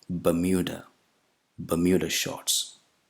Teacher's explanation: the second vowel sound is not U. It's a combination of a consonant and a long vowel, U plus U. Bermuda.